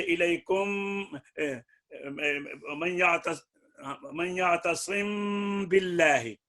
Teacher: ایک الف کی مقدار میں غنہ ناک میں لے جانا ہے میم میں غنہ کے ساتھ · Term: اخفا